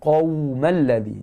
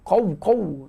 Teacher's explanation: Qa tu tebal, pangkal halkum ada sifat isti'la. Pangkal lidah hampir dengan anak tekak ada sifat isti'la.